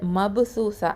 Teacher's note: இந்த ப சுக்கூன் இருக்கிறதுனால இது வந்து கல்கலா சுகரா, லைட்டாக கல்கலா கொடுக்கணும்